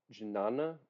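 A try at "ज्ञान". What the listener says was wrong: no J. No, it's no J. You don't pronounce the J. Jnana. Jnana.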